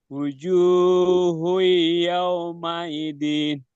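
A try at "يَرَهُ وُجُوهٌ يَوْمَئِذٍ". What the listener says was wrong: kurang ditahan. Ya, jadi harus konsisten ya dari eh, kalimat pertama sampai selanjutnya itu harus konsisten ketika bertemu dengan huruf ya. I, mai harus sama, 3 ketukan. Mai, ya.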